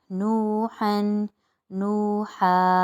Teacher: دو زبر کی تنوین وقف کی صورت میں ایک زبر رہ جائے گی اور بنے گا الف مدہ، کیونکہ الف خالی اور سے پہلے زبر ہو جائے گا تو ایک الف کی مقدار یہاں پر بھی کھینچے گا.